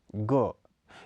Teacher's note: इसका उच्चारण क और ख वर्ण के मध्य माना जाता है यह कोमल तालव्य घोष अल्पप्राण स्पर्श ध्वनि है इसके उच्चारण में क की भाति ही पश्च जीवा को कोमल